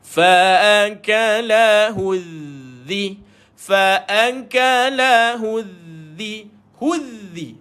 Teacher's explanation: jumpa dengan Zal lidah dikeluarkan